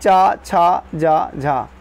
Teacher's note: च वर्ग में जितने भी वर्ण है उनका उच्चारण कहां से होता है तालू से होता है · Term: तालव्य ध्वनियां